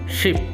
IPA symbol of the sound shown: ʃ